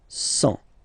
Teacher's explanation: Remember, final T not pronounced.